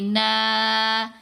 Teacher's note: پھر نون کے اوپر زبر، ساتھ الف، پھر نون کو 2 حرکات کی مقدار لمبا کریں گے.